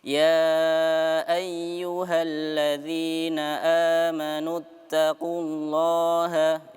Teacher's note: maka kita langsung menyambungnya ya tanpa memanjangkan huruf nunnya ya